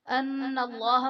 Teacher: ان اللہ میں نون مشدد ہے تو یہاں پر غنہ کریں گے، اور اس میں جلالت اللہ عز و جل کے لام سے پہلے حرف پر زبر ہے تو یہاں پر اس میں جلالت اللہ عز و جل کے لام کو پر یعنی موٹا پڑھیں گے